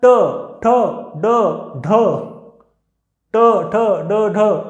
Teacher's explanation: आपण जर टाळूला हात लावला की जो मधला भाग असतो मऊ, त्या मऊ भागापाशी हवा ट म्हणजे जिभेचा समोरचा टोक जे आहे ते टाळूच्या मधल्या भागाला स्पर्श करतं, तिथे हवा अडवली जाते आणि एकदम हवेचा स्फोट होतो. तिथं त्यांचं उच्चारण केंद्र आहे. · उच्चारत असताना हवेचा हा मधला भाग जो आहे, जिभेचा समोरचा टोक हे एकदम टाळूच्या वरच्या मधल्या भागाला हवा अडवून ठेवतं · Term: मूर्धन्य